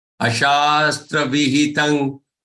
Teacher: The anuswar here on ta has to be pronounced as nga, the one which is in ka group. Okay, the fifth letter of the ka group.